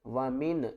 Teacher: یہاں پر آگے دیکھیں اس ورڈ کو کس طرح پڑھنا ہے، واو زبر وا، میم نون زیر من، و من۔ یہاں پر ہم نے نون کی آواز کو ظاہر کر کے پڑھنا ہے